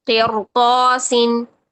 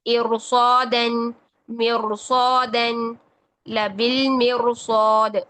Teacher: را ساکن ہے، اس سے پہلے کسرہ ہے اور اس کے بعد حروف مستعلیہ ہے، تب بھی را کو موٹا پڑھیں گے